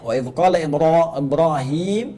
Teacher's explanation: Jadi dibacanya wa idz qala Ibrahim itu menggunakan tafkhim ra-nya.